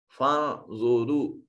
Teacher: नून साकिन के बाद ज़ा हर्फ इख्फा है, नून को मखरज में छुपा कर पढ़ेंगे।